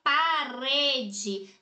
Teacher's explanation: como sílaba tônica, que é pronunciada com mais intensidade, com mais força, o re